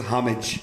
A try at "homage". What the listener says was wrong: The H is silent.